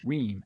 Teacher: And then there's this vowel at the tail end. His intensity goes down at the end of the utterance. His pitch goes down at the end of the utterance, and everything gets kind of long.